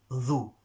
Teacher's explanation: Dhu, not zu, a buzzing sound. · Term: zal